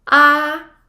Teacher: Although it's flat, however, it's pronounced with a high pitch. So here, letter A will be pronounced as, with the first tone, A.